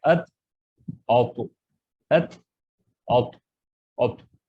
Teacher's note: زبان کی نوک جا کے یہ اپنے سامنے کے دانتوں کے اوپر تالو پہ لگتے ہیں تو تے اور توئے ادا ہوتا ہے، لیکن توئے کی ادائیگی کے وقت تھوڑا سا کلے پھولنا چاہیے اور اس کو پر پڑھنا چاہیے، جیسا کہ ات اوتو، ات اوتو، اوتو، اس طرح سے تے اور تو۔